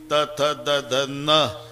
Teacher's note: नळ्याचा न उच्चारा तर जीभ दाताला स्पर्श करणार बाणाचा न उच्चारा अजिबात दाताला लागत नाही टाळूला इतकं जवळजवळ आहे · त थ द ध न दाताशिवाय काही उच्चार नाही